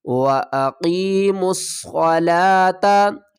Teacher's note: میم کو صاد سے ملائیں گے، واو الف اور لام کو نہیں پڑھیں گے۔